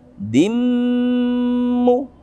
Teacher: 'Amadin Dimmu, ada dal dengan kasratain bertemu dengan mim. Hukum tajwidnya adalah memasukkan idgham, idgham bi gunnah. Idgham memasukkan dengan dengungan.